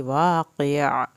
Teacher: वाक़िअ, वा अलिफ को पूरा खींचें, क़ाफ को क़ाफ पढ़ना है, आखिर में आइन की आवाज़ निकलेगी